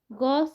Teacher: ग सघोष अल्पप्राण होता है